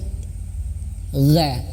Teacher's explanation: direnggangkan, agak direnggangkan lidah kita ketika mengucapkan ga, dan ditebalkan. Lebih tebal lagi. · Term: huruf ghain